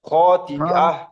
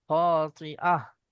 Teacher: খাতিয়া বললে এখানে ইয়া উচ্চারণ হয়ে যাচ্ছে, এখানে ইয়া উচ্চারণ হয়ে যাবে, কিন্তু আছে এখানে হামজা।